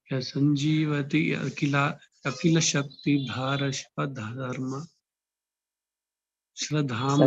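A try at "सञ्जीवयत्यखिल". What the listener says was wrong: తాకి యావత్ చెప్పండి. ధార కాదు, ధర.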